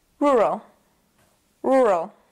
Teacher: And of course, there's a schwa in the second syllable. It's very fast, so you have to be kind of fast with it.